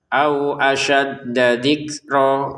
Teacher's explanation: mim sukun bertemu dengan hamzah dengan jelas ya. Dibaca jelas.